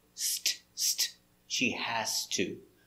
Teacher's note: But when we put it together with the T sound that has no voice, the Z changes to the S sound. It has no voice.